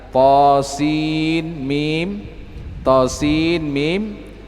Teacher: Bacaan Hafs an Asim itu cara bacanya dibaca masuk ke huruf mim. Nun yang berada di huruf sin itu dimasukkan ke huruf mim, itu menurut bacaan Hafs. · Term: idgham